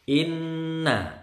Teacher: Gunnah itu dengung. Mim bertasydid, nun bertasydid. Dengung kira-kira 3 ketukan lah. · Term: Gunnah musyaddadah